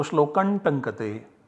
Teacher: this anusvara is substituted by the nasal parasavarna of T, which is Na. So shlokan tankate, but this is optional.